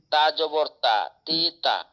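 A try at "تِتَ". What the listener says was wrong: তিতা, হারকাতের উচ্চারণ তাড়াতাড়ি পড়তে হয়। জেডটাও হারকাত, জবরটাও হারকাত, এই দুটোটার উচ্চারণ কি তাড়াতাড়ি, তা জের তি, তা জবর তা, তিতা।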